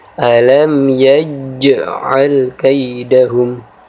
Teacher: jim di sini dibaca sedikit menekan dan sedikit memantul. Kita baca dengan cara menekan dan sedikit memantul sebab ini adalah huruf qalqalah dan qalqalah sughra atau qalqalah kecil.